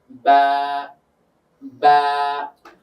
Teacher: বায়ের মাখরাজ যদি আমরা দেখি, বাটা হয় ঠোঁট থেকে। তো ঠোঁটের কোন জায়গা? ভিজা অংশ থেকে।